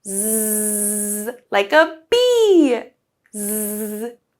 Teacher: So let's take a look at how we pronounce Z. So Z, the Z sound, is very similar to S or S, but you use your voice. So in your mouth, you'll have your tongue close to your teeth, but use your voice. So, Z, like a bee. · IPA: /z/